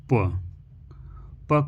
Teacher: प को बोलते समय हम देखते हैं हमारे दोनों ओठ एक दूसरे को छू रहे हैं। तो इसे कहेंगे ओष्ठौ ओष्ठ यानी प को ओष्ठ नामक स्थान से बोलते हैं।